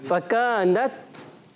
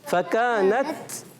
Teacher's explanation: شدت کی وجہ سے سختی کے ساتھ آواز بند ہوتی ہے, مگر پستی اور نرمی کے ساتھ سانس جاری ہوتا ہے, آواز آتی ہے. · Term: شدیدہ محموسہ